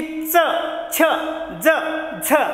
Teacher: पहा पुढचे पटाशीचे दात आहे, जिथं आतमध्ये दात वगैरे सुरू होतात तिथं उच्चार करून पहा की च, छ, ज, झ. म्हणजेच की दंतमुलीय म्हणजे तालूतून उच्चार होतो म्हणून याला काय म्हणायचंय, तालव्य.